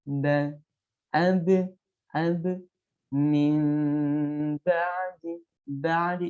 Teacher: Kalau membaca huruf ba, ba, ba, ba, usahakan sampai tidak ada nafas yang sengaja mengalir keluar.